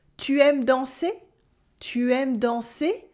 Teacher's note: just use your normal sentence with a rising intonation at the end